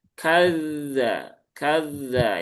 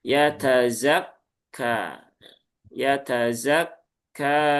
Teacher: Kalau kadzaba dia ada rakhawahnya. Kalau kaf dia itu syiddah. Maka kalau dalal kan kadza kadza ya alirkan dulu.